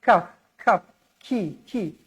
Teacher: macam mana nak sebut huruf Kaf pastikan ada angin juga